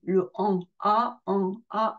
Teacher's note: a on ouvre on dégage au niveau des articulations et donc on reste avec la bouche ouverte le a et on fait remonter le son dans le nez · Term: son nasalisé